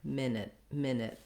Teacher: a long stressed first syllable with the vowel like it and did same vowel in the second syllable but much shorter